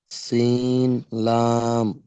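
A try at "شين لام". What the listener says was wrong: শিন লাম, মাশাল্লাহ, সঠিক বলেছেন।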